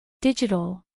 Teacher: Acentuación en la primera sílaba